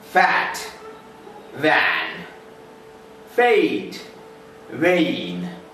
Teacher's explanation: Labiodental sounds like f and v are produced with the help of lips and teeth. Here, during the production of f and v, lower lip touches back of upper teeth.